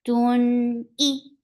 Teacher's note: Hamza is very sharp. The sounds cut off very abruptly